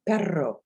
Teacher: the r sound in spanish comes from the front of your mouth you put your tongue to the top of your mouth just behind your teeth and you roll your tongue